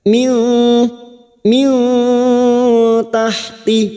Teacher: nun sukun bertemu ta Ikfa Hakiki kita samarkan bunyi nun sukun dan mendengung